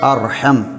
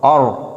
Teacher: நாங்கள் ராவை வல்லினமாக ஆர் என்று மொழிய வேண்டும்